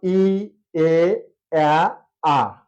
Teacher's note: ই এ আ এভাবে যখন উচ্চারণ করবো আস্তে আস্তে নামবে